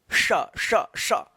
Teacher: जीभ जो है ना तालु के ऊपर हो जाता है, फिर आवाज निकलता है श। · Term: तालव्य श